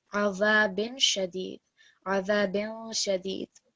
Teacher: this is going to be a light nasal sound with the tanween followed by the letter sheen